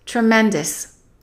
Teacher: The second syllable is stressed, but the OUS is reduced.